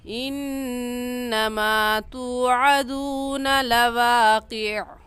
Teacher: تو اب ہم لواقع آخری حرف کو ساکن کر دیں گے، ساکن کر کے پڑھیں گے. اس کو ملا کر پڑھنا درست نہیں ہے. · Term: وقف